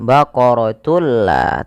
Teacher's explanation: dengan cara memasukkan tunnya kepada lam dan diganti bunyi suara nunnya menjadi suara lam. Baqaratul la, tapi tidak ditahan. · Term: idgham bila gunnah